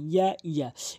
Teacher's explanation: ইয়া উচ্চারণ হয় জিহ্বার মাঝখানে উপরে তালুর সঙ্গে